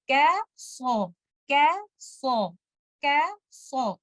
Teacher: letter kaf is a light letter. Don't make letter kaf heavy because of letter sad.